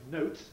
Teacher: can we say about the t there well it's clearly final it's a final t and as such it's not strongly aspirated note it may have a bit of aspiration but not strong aspiration